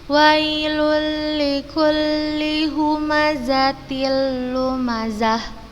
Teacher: Tanwin bertemu dengan huruf lam, maka dibaca idgham bila gunnah